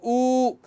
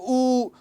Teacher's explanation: पहले वो ह्रस्व ध्वनि निकालता था ऊ, फिर उससे थोड़ा तेज और बोलता था ऊ, फिर उसके बाद प्लुत निकालता था ऊ। तो ये इसने तीनों स्वरों में बात की, मतलब ह्रस्व में, दीर्घ में और प्लुत में।